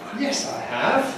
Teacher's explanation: we have a Fall + a Rise. That is the pattern we use for contradicting somebody’s statement